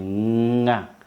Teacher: Kwa mfano kama vile ng'a unaona ulimi utafanya hivi ili sehemu ya nyuma ya ulimi ndio itagusa pale kwenye kaka laini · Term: konsonanti za kaka laini